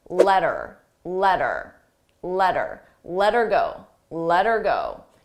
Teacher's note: notice how her sounds like er you don't hear the H ER but I also attach it to the word before so